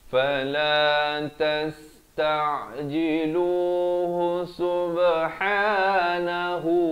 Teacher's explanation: Tasta'jiluh kalau waqaf. Tapi kalau kita nak sambung, ha itu berbaris dhammah dengan 1 harakat.